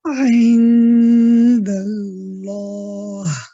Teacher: So when you're moving after the dal, when you say da, when you move away from the dal, I want you should be getting ready. As soon as you're going to the lam, you have to be ready for a heavy lam.